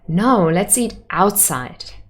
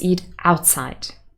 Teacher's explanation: we have lunch inside and b answers no let's eat outside outside would have contrastive stress because we contradict the inside the suggestion from before